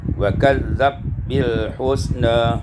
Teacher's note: idghamul ba fil ba ma' taklil, diidghamkan ba dengan tak dan berserta taklil.